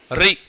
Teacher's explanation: री बोल के देखोगे सामने वाइब्रेशन हो रहा है ना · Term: अग्र